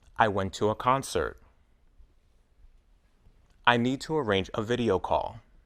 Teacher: the word to is still unstressed but the vowel isn't reduced to uh · When the next word begins with a vowel sound, the word to is often pronounced to, with the vowel oo.